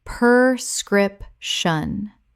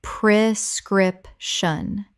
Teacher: The first syllable is pre, not per.